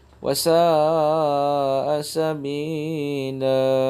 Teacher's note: Wasa itu kemudian dipanjangkan sebanyak 5 harakat.